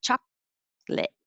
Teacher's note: i hold my tongue in the k position but i don't release it